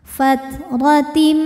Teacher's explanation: maka ro dibunyikan dengan tebal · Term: ro tafkhim